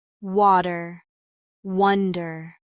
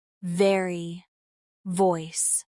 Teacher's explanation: The W sound is made with rounded lips and a gentle ooh shape like in water and wonder.